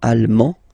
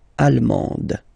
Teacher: you don't pronounce the final D, but then you pronounce it here for the feminine form